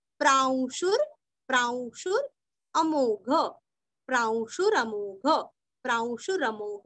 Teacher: शु रस्व और आधा र बोल के अ पूरा बोलना है